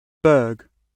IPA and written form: bəːɡ (Berg)